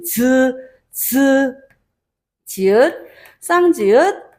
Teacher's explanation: 뭔가 원래는 여기 잇몸 소리에서 즈 발음이 됐다가 뒤로 한 소급 들어갔대, 뒤로 들어갔대 라고 이야기를 하면은 파열과 마찰 그 사이를 생각해 볼 수가 있겠지. 막았다가 마찰시키면서 나는 소리